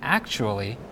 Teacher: In the word costume, the TU sound is pronounced like tu. However, the TU sound in the word actually is pronounced like chu